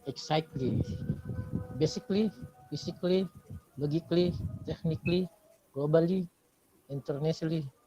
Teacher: because there is schwa sound so we have to assume that the a is not there